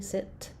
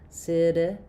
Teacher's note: I might have a aspirated t sit with a puff of air